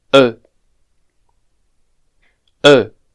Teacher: This vowel sound is very similar to I, but I would say that E is pronounced with the mouth a bit more open than I